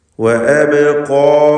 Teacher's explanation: ഖാഫും അതിൻ്റെ ദീർഘാക്ഷരമായ അലിഫും ഇവയിൽ തഫ്ഖീം നൽകണം